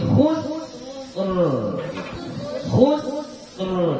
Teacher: Sebelum huruf yang berbaris sukun ini ada huruf yang berbaris dhammah. Maka ra yang di sini kita baca tafkhim